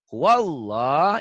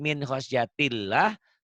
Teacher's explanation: Karena sebelum lafaz Allahnya baris di atas. Kalau yang tadi min khosyatillah, lafaz Allahnya dibaca tipis Karena sebelum lafad Allahnya berbaris di bawah atau kasroh.